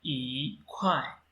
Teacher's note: if E is followed by a syllable having fourth tone mark, then the first tone mark of E will be changed into second tone mark